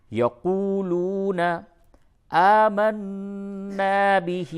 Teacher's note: نون مشدد ہے، غنہ ہوگا